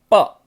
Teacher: प वर्ग में हमारा दोनों ओंठ जो है एक दूसरे को मिलते हैं, प। तो ये पांचवा जो है वर्ग है, प वर्ग है, इसको बोलते हैं ओष्ठ, यानी ओंठ से मिलता है।